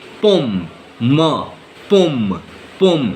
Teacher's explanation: you have to say pom because here there is no nasal sound